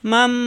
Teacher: এখানে মিম ধরে গুণ্য করে পড়তে হবে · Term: ইকলাফ